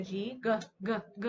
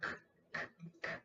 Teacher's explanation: Okay, so when we make our K and G sounds, the only difference between those two sounds is when our voice is on, it sounds like the G, G, G, G, our vocal folds are vibrating. And when our voice is off, it's the K sound, K, K, K.